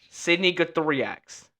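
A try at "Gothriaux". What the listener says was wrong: That's French. The X is silent.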